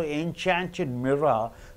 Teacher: Mirror is a noun. So enchanted mirror. You have to stress on mirror.